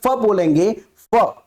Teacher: तो नाक पर कोई कंपन नहीं हो रहा है इसका मतलब वह अनुनासिक नहीं है